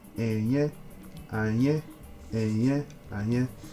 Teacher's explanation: Again, this is a low tone and a high tone.